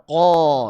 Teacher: Kalau naik namanya istiala. Contoh misalkan qo suaranya naik tuh makanya dibaca tebal